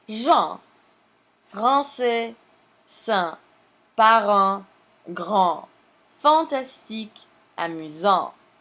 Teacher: Notice that there is no N sound after the nasal vowel. · They are called nasal because some air passes through the nose when they are pronounced.